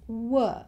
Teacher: Australians don't tend to say the letter R at the end of words.